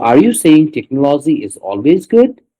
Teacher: So in the good part it was rising intonation